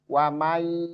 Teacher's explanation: Memasukkan nun ke ya dengan gunnah, dengan dengung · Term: Idgham bi gunnah